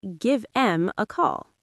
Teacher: Words like them often become just M. You say give M a call. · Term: pronoun reduction